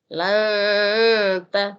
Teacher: disamarkan bunyi nunnya seakan-akan kita langsung mau menyebut huruf ta